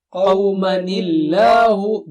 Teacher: Don't put mad there. Make sure it is not mad. You just join it. It is a merger.